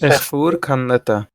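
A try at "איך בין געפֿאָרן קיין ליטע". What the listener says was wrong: Okay, F and S, they're confused. Fuhr kann Litte. Do we ever get double consonant letters in Yiddish? It sounds like if it were the same form in German, it would be written with a double T to show short I.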